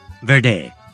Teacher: The sound of V, known as voiced labiodental fricative, as in Verde.